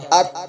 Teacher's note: زبان کی نوک اور ثناء اولیاء کے جڑ سے ات ادا ہوتا ہے